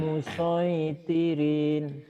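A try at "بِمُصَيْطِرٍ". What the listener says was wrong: Nah, rinnya kan kosar Pak. Pendek. Nggak depan, nggak ada mad. Ini Pak bacanya. Kadang ada madnya. Karena nggak ada madnya ya Pak ya. Tapi kalau dari Bapak baca Quran bimusoitir itu ujung Betul, kalau dihentikan baca Quran semua harus dihentikan kecuali patah tain, kecuali patah dua. Nah, semua baris apapun kalau berhenti ini seakan-akan ada sukunnya Pak di sini.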